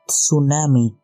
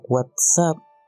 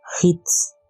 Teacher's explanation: tenemos una africada alveolar sorda. Suena como una TS en la palabra tsunami, en la palabra WhatsApp o en la palabra hits.